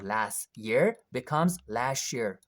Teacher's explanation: Normally, Americans don't pronounce t sound after s, right?